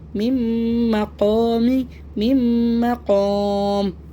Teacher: نون کی آواز میم میں گئی، اس میں کیا کرنا ہے ہونٹوں کو بالکل بند کرنا ہے